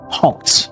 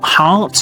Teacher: The O sound, this is the lot vowel. Is very short rounded